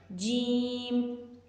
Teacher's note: جیم کی ادائیگی کے وقت زبان اوپر کی طرف تالو سے چپک کر ہٹ جاتی ہے